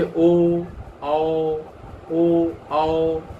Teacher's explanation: जिनका उच्चारण कंठ से जीभ और ओठों के कुछ स्पर्श से होता है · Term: कंठोष्ठ